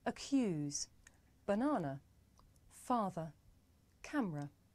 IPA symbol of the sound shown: ə